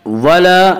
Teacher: لغوا ولا، ولا الف مدہ، الف ہمیشہ مدہ ہوتا ہے، الف سے پہلے زبر ہوتا ہے، الف مدہ کو ایک الف کے برابر کھینچ کر پڑھیں گے